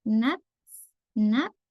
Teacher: Maka kalau ta sukun dia kayak ada s-nya ya.